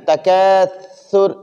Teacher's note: سا کو نرم پڑھنا، یعنی یہ اوپر اور نیچے دانتوں کے درمیان زبان کا بالکل باریک سا نوک باہر نکالنا. تکاثر سا کو نرمی کے ساتھ، اور را وقف کی وجہ سے ساکن ہو جائے گی.